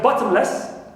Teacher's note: Less, like bottomless, clear, so less is neutral, and ba is stressed, as usual